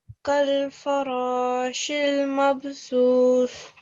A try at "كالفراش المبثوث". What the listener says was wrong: Mab. So your lips need to open out after they said the b.